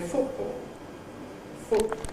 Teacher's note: That's a glottal articulation, football. I don't make it with my tongue tip.